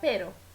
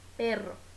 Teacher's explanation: um R em espanhol vibra, dois R's vibra mais a língua. Como em mas, que a gente fala pero.